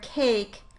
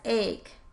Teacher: initial consonant deletion (for example, if a child said “ache” for “cake”)